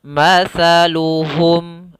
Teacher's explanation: ujung lidah ditempelkan dengan gigi seri atas, maka terkeluarkan dengan suara sa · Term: huruf sa